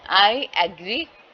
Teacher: speakers often introduce a J to ease the transition to follow the vowel sound, ठीक है, vowel sound को follow करने के लिए I और J का जो साउंड है उसको करते हैं, ठीक है, बोलते हैं। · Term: लिंकिंग जे